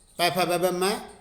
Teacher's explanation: पै वर्ग, पै फ ब म, और उपपदमानीय इनका उच्चारण स्थान होता है ओष्ठ।